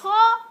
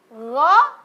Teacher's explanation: ko ada apa? Ada angin. Gho tidak ada angin.